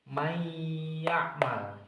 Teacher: Cara membacanya memasukkan dan panjangnya dua alif atau empat ketukan. · Jadi, ini cara membacanya may ya'mal seperti itu. Jadi, suara nunnya ini dimasukkan menjadi suaranya huruf huruf ya